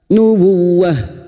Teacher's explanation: tak marbutah ini yang dibaca waqaf, maka menjadi sukun bunyinya nubuwah. Nubuwah menjadi ha.